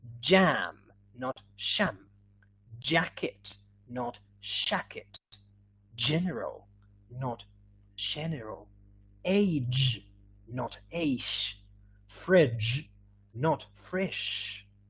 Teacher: spanish speakers as we don't have this one we may change it for sh and we may say sham shakit fresh